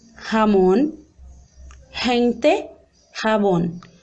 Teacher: É como se fosse um R aspirado.